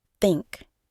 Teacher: we pronounce it by putting our tongue between our teeth and blowing air out gently